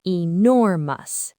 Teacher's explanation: Since nor is the strong part, the ending is just a soft mus.